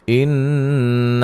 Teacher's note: یہاں نون مشدد پہ غنہ ضروری ہے